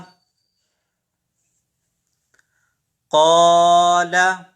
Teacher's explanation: क़ा को हमने खींचा, उसकी वजह यह है कि अलिफ से पहले ज़बर है।